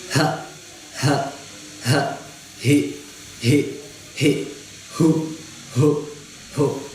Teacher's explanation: سینے سے ادا ہوگا نا، مطلب سینے کی طرف سے جو حلق کا حصہ ہے. تو اگر آپ سینے کے اوپر ہاتھ رکھ کے اس کو پڑھیں گے ہا تو آپ کو محسوس ہوگا مطلب جیسے پمپ نہیں کرتا دل اس طرح نا، وہ آپ کو نا زور محسوس ہوگا.